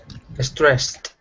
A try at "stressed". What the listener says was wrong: Okay, try to keep the E out of it. It's just stressed.